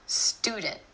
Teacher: My tongue stays up for the T sound after the N. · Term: held T